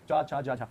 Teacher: जब चा छा जा बोलते हैं जीवा थोड़ा सा आगे टच करती है, लेकिन जब टा ठा डा बोलते हैं जीवा थोड़ा सा और पीछे मुड़ के जगह स्पर्श करती है। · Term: तालव्य व्यंजन